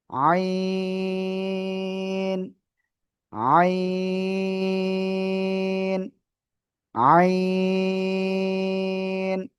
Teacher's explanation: গলার মধ্যখান থেকে চেপে, এক আলিফ না, তিন আলিফ না, চার আলিফটা নিয়ে আমরা এই অক্ষরটা উচ্চারণ করব।